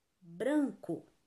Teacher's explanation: Você pronuncia a penúltima sílaba com mais força. Então, você sabe que bran é a sílaba mais forte da palavra branco. · A penúltima sílaba de branco é a sílaba mais forte. Branco. Essa é a última, essa é a penúltima.